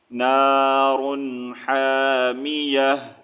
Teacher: یہاں پر سٹاپ کی صورت میں تا ٹو پیش ٹو نہیں ریڈ کریں گے، لاسٹ میں ہا کا آواز ساؤنڈ نکالیں گے